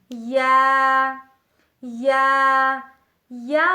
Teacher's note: وسط زبان یعنی زبان کی بیچ کا حصہ جب بالمقابل اوپر کے تالو سے لگے تو اس سے لفظ یا ادا ہوتا ہے۔